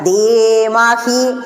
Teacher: ഉണ്ട് മുകളിൽ ഒരു വര കാണാം ഉയർത്തണം ഇങ്ങനെ ഗായത്രി ചൊല്ലുമ്പോൾ അവസാനം എത്തിയിട്ട് കുട്ടികൾ ധീമഹേ എന്ന് ചൊല്ലി ഹി എന്ന് നീട്ടാൻ പാടില്ല